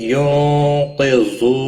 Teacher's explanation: نون ساکن کے بعد حروف اخفا کا قاف ہے، اخفا حقیقی ہوگا، گنہ کے ساتھ پڑھیں گے۔